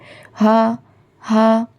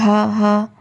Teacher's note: ये जो हा है हलक के बिल्कुल निचले वाला हिस्सा से अदा होता है